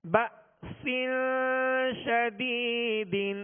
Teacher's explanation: کے ساتھ حمزہ ساکنہ ہے، یہاں جھٹکا واضح کریں گے، بأسن، سین کے نیچے 2 زیر کی تنوین ہے، آگے شین حروف اخفا میں سے، لہذا غنہ کر کے ادا کریں گے۔